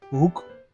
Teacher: So it is pronounced as hook. The H is an H sound with a little bit of voice.